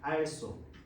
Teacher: 리을 뒤에 히읗이 먼저 시옷에다가 영향 주고 사라져버려. 알쏘가 돼버려.